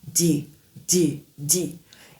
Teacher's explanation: Le D en anglais, la langue est placée vers l'avant derrière un peu derrière les langues les dents supérieures. relâchement rapide et audible comme si vous poussez un tout petit peu d'air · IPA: /d/